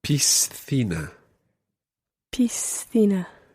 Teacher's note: You pronounce the S as part of the syllable pis, and then the next C is pronounced as a TH, so thina, piscina.